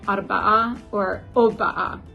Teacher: one of the shibboleths is whether people pronounce the R sound in the word for four